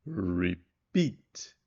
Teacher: A primeira é mais baixa, re, e fraca, e a segunda é mais alta, beat, e forte. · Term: word stress